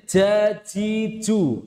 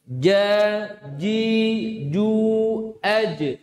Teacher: Yang betul dari pertengahan lidah. Pertengahan lidah bertemu dengan pertengahan langit-langit atas. Jadi ja, ji, ju, aj. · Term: jim